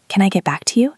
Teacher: Your voice should go up at the end, showing you are helpful and open.